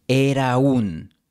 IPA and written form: 'e.ɾa 'un (era un)